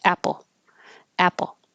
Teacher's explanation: the P your tongue is already making the L Sound and hold the l sound for a little longer than you might think you need to so it can be heard